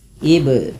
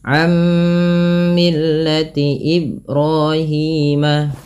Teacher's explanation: Ba di sini dibaca dengan bacaan qalqalah, yaitu artinya memantul. Apa yang dipantulkan adalah bunyi suara huruf ba-nya, yaitu ib. Nah, tidak dibaca dengan Ibrahim.